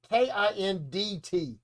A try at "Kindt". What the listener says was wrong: Kent. The D is silent.